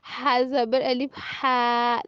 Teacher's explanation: और जब हा के ऊपर जबर होगी, पहले जेर था अब जबर, तो जब जबर होगी तो मुंह फुल खुल जाएगा। और साउंड कौन सी आएगी, आ।